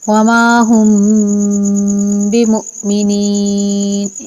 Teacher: رک کر غنہ کریں گے ایک الف کے برابر